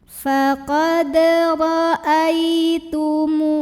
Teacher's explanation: Cara membunyikannya, mim yang dhammah dipanjangkan 2 harokat. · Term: mad dhabi'i